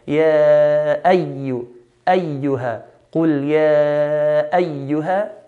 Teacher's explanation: Then on the word ya ayyuha, there's a shadda on the ya. So we're meant to hold the ya